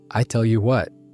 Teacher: the H coming in front of the W, which is a real phonological feature of certain Texan accents